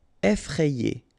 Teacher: Okay, remember, double F, so you open the E, so E, effrayé.